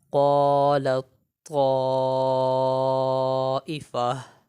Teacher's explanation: لام کو طا کے ساتھ ملا کر پڑھا ہے، تا کو نہیں پڑھا ہے